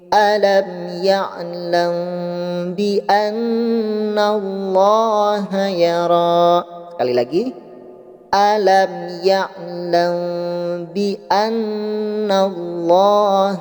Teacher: maka didalam hukum Ikhfa Syafawi pun huruf M nya harus ditahan terlebih dahulu